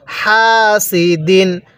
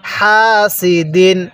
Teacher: হাটা উচ্চারণের সময় মুখ দিয়ে হালকা বাতাস বের করবেন